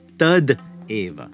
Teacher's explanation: So if we had tat eva, meaning just like that, then the word final ta kara would have to gain voicing. It turns into a voiced dental, the da kara. Then the a gets written as a matra on top of your da kara, and you end up with tad eva.